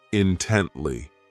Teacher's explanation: This adverb has 3 syllables, and the stress is on that second syllable